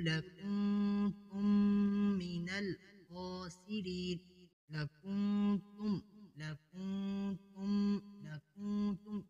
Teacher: یہاں پر اخفا ہو رہا ہے اور تم من یہاں پر ادغام ہو رہا ہے